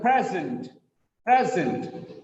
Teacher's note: It's a very good present. Present. The first syllable is stressed.